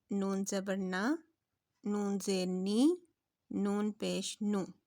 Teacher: ان کی جڑوں کے سے زبان کا سامنے کا کنارہ جب ٹچ ہوتا ہے تو حرف نون ادا ہوتا ہے